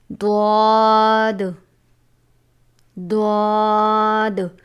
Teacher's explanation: زبان کی کروٹ اور اوپر کی داڑھوں کی جڑ سے ادا ہوتا ہے